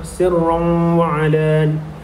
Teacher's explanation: 2 harakat. Seterusnya pada kalimah sirran wa alan, pada kalimah tersebut tanwin berjumpa dengan huruf waw dan merupakan hukum idgham ma'al hunna yang perlu dibaca dengan dengung 2 harakat